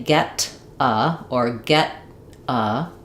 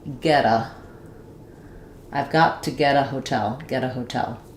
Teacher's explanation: we connect to the vowel sound and we make a flap t there. Um we can also do a flap t on got to if we think if we change got to to gota. · The t in the middle gets flapped.